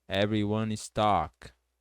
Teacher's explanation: Como as palavras em inglês o E não é pronunciado no final, você pode juntar o N com is, ficando everyone is talk